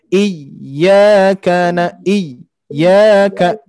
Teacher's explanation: Khusus di ayat keempat, iyanya harus ditekan dulu ya. Tidak tidak mad, tidak panjang, tapi iyyaka iyyaka ya.